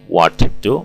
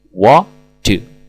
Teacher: Buanglah bunyi konsonan T pada kata what karena konsonan T dan D memiliki kemiripan bunyi artikulasi. Maka what do semula berbunyi seperti ini, what do menjadi what do.